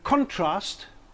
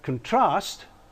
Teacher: the first syllable is stressed and we have a noun whereas in contrast we have a verb with the second syllable receiving the stress